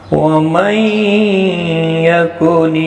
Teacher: ادغام با غنہ ہوگا، یہاں پر غنہ کے ساتھ پڑھیں گے